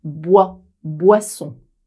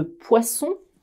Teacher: tu as une vibration des cordes vocales bois boisson et pour le peuple de poisson pas de vibration